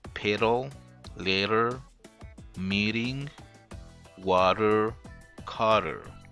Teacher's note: it will be also an aspirated so this one almost like the T sound becomes almost like the r sound